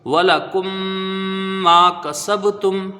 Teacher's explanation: الف مدہ ہے، کاف کو جلدی پڑھا جائے گا، زبر ہے، سین کو با سے ملائیں گے تو یہاں پر قلقلہ ہوگا، با ساکن ہے، با حروف قلقلہ میں سے ہے ، تا کو میم سے ملا کے پڑھیں گے، وَلَكُمْ مَا · یہاں میم مشدد ہے، میم کا میم میں ادغام شفوی ہوگا، غنہ کریں گے ، میم میں 1 الف کی مقدار رکھیں گے، الف مدہ